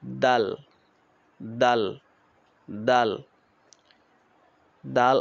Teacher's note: দালের উচ্চারণ শক্ত পাতলা আওয়াজে